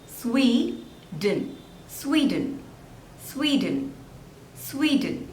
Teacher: There are 2 syllables and the stress is on the first one.